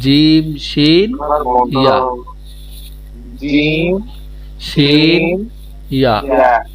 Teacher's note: জিহ্বার মধ্যখান হইতে তার বরাবর উপরের তালুর সঙ্গে লাগাইয়া